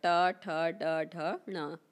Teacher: ट वर्ग का उच्चारण स्थान हो जाएगा मूर्धन्य या मूर्धा